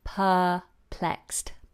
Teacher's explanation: We don't pronounce the letter R.